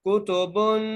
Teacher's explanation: फीहा फीहा कुतुबुन, काफ के ऊपर पेश है, ता के ऊपर पेश है, बा के ऊपर दो पेश हैं और क्योंकि ये तनवीन है इसलिए हम यहाँ पर गुना करके पढ़ रहे हैं